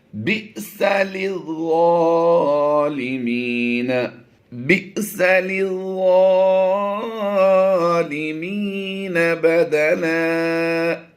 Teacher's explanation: حمزہ ساکنہ پھر آ گیا ہے، با حمزہ زیر بی، تو یہاں پر جھٹکا دے کر پڑھیں گے ہم